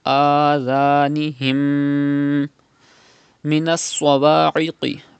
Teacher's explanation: Pronounce sod and qaf with thicker voice because they are from mustalia letters